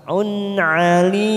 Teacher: dhamma tanwin bertemu ain kita baca jelas idhar halqi. Un alim. Alim mat arid disukun 4 harakat kita panjangkan.